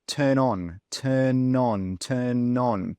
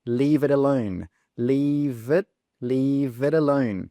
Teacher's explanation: This is when the final consonant sound links to the first vowel sound of the next word. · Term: catenation